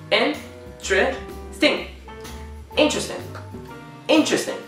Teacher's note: when you say interesting, interesting, we just shrink it to 3 syllables.